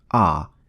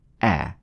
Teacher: The first alif is lightly pronounced, as in the word at, so it is not a full mouth ah, but a. Second and third letters are both lam, which are pronounced as a full mouth dark L, as in the word luck.